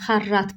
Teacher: Xarrat sözündə isə xarrat vurğu sona, yəni ikinci hecaya düşür